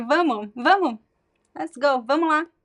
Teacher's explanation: So the S, the last S it disappears. Again, when you're speaking naturally, like in common, fast, natural speech.